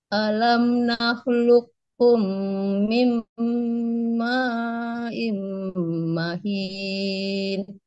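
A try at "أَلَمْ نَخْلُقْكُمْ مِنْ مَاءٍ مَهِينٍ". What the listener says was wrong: Alam nakhluqukum min ma'in mahin. Coba di sini Bu, di sini ya idgham bi gunnahnya tahan dulu, jangan tergesa-gesa ya. Mahin, tahan dulu.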